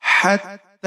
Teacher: ہا کے اوپر زبر ہے، تا مشدد ہے، تا کے اوپر کھڑی زبر ہے، ایک الف کے برابر کھینچیں گے۔ حتی، ہا آپ نے گلے کے درمیان سے ادا کرنا ہے۔